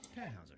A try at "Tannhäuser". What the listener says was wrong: We pronounce it Tannhäuser with an umlaut.